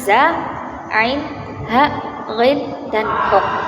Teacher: Yang kedua itu ada halqiyah, yaitu pangkal tenggorokan, yakni makhrajnya huruf yang terdapat pada pangkal kerongkongan